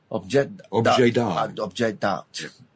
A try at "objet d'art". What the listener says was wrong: Objet d'art, yeah. You don't say the T in this. Objet d'art. Yeah, almost always.